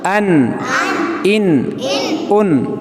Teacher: تو حروف حلقی میں سے کوئی حرف آئے تنوین کے بعد تو وہاں اظہار ہوتا ہے، اخفا نہیں ہوتا. اظہار میننگ وائس بالکل صاف ہوتی ہے، کلیئر ہوتی ہیں، اور ناک میں آواز نہیں لے کر جائیں گے، صاف پڑھیں گے